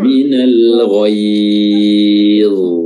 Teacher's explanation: huruf dha, dia juga memiliki sifat tebal, isti'la, ya. Makanya baik dia sukun juga tetap harus dijelaskan isti'lanya, minal ghaidh.